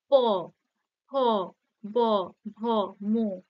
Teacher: ঠোঁট দুটি পরস্পরকে স্পর্শ করছে তাই এই ধ্বনিগুলিকে অষ্ঠ ধ্বনি বলা হয়